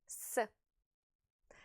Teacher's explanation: your vocal cords do not vibrate when you say s therefore the letter s is a voiceless consonant and at the